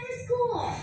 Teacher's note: Kalau di American English itu R-nya masih ada kita dengar ya